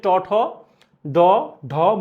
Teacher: পশ্চাৎ দন্তমূল হচ্ছে ট ঠ ড ঢ মূর্ধন্য